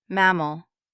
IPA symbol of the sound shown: ə